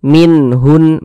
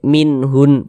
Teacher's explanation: Jadi kalau nun sukun atau harokat tanwin bertemu dengan salah satu daripada 6 huruf yang di samping itu, maka hukumnya adalah izhar halqi. Nah, karena dia izhar maka dibaca jelas, tidak berdengung. Nunnya itu kita baca jelas, minhun.